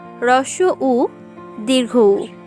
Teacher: হ্রস্ব উ, দীর্ঘ উ, এদের উচ্চারণ স্থান ওষ্ঠ